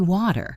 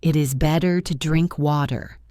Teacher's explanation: Your tongue just taps the roof of your mouth very quickly. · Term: flap t